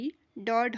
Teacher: जब हम इसे इन्हें उच्चारित करते हैं तो हमारी जीभ उस मूर्धा से स्पर्श करती है। इसीलिए इन्हें मूर्धन्य व्यंजन कहा जाता है।